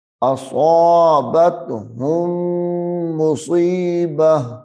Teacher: اس تا کو ہا میں بدلیں گے اگر سانس ٹوٹ گیا ہے تو